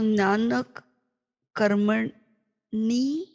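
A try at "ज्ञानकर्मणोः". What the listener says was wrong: Not karmani, but karmanor. So first the sandhi.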